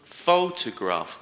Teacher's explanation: the stress is on the 1st syllable